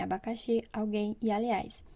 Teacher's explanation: são palavras cuja sílaba tônica é a última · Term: oxítonas